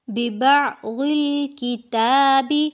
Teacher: عین کو آپ نے جب بھی پڑھنا ہے حلق میں سے نکالنا ہے